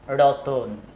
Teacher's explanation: ত এবং ন এর মাঝখানে কোনো স্বরধ্বনি ছিল না, অথচ তয়ের পরে এখানে একটা অতিরিক্ত স্বরধ্বনি আমরা মুখে মুখে উচ্চারণ করে নিই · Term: মধ্য স্বরাগম